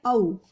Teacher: ओ और औ कंठोष्ठ के उच्चारण स्थान है इनका